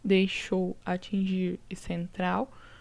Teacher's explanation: Aqui, terminada em R, terminada em L. São oxítonas porque tem a última sílaba tônica.